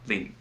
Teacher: And I looked up the Cantonese pronunciation, and I think it's lin, L-I-N, short and like a low tone, which sounds a little bit more like lit because it's kind of like cut off